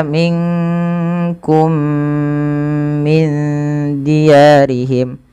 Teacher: memasukkan mim kepada mim lainnya dipanjangkannya sama sebagaimana idgham bighunah ya. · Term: idgham mimi